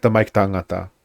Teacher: in tamaiki tangata, the I at the end of tamaiki always disappears